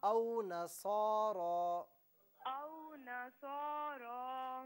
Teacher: نصارہ میں صاد اور را دونوں کو ایک ایک الف کی مقدار کھینچ کر پڑھنا تھا